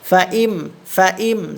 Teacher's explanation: মিম সাকিনের ইজহার, এই মিম সাকিনে কোনো গুন্না হবে না